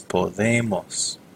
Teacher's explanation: notice that there is no UE there. The O does not split because we're not stressing it anymore. It becomes podemos.